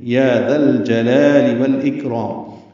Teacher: یا 2 حرکات لمبا کرنا ہے